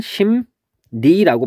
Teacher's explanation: 예를 보면 심리라고 돼 있을 때 얘는 발음을 하면은 심니라고 발음이 됩니다. 그러면 미음하고 리을이 만나서 미음하고 니은으로 바뀌었어요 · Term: 비음화